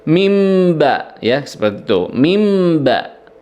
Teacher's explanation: bunyi nun sukunnya dirubah menjadi bunyi mim, ya, berubah menjadi mim, sehingga di sini tidak dibaca min tapi mim, ya, seolah-olah di situ mim ketemu dengan mim, ya. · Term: iklab